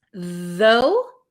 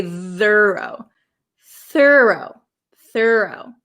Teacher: Though has a vocalized th though. And thorough does not. We don't say thorough.